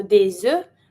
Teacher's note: I do my link because E starts with a vowel, so des œufs, but because it's plural, I don't pronounce the F and the S.